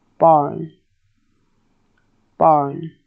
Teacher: you either gather up the back of the tongue or you turn up the front of the tongue while making the R sound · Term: rhotic vowels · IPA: /barn/